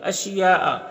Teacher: اشیاء میں جو مد ہے یہ مد متصل ہے، اسے 3 سے 4 الف کے برابر کھینچ کر پڑھیں گے